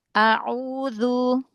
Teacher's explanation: Huruf ainnya dari tengah tenggorokan lagi, terus monyongin lagi.